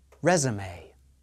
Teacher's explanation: The final E is an A sound. The stress is on the first syllable.